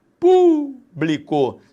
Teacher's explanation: sílaba tônica é a antepenúltima proparoxítona